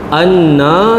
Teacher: nun sabdu wajibul ghunna. Wajib dengung dua harakat. Zurriyatahum.